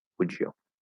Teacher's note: So if I say like, would you, you'll very commonly hear would you, would you. The Y disappears, the D and the Y blend into a J